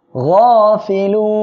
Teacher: আর এক আলিফ মদের পরের অক্ষরে ওয়াকফের কারণে সাকিন হয়, 3 আলিফ টেনে পড়বেন। তাহলে এখানে পড়বো গাফিলুন।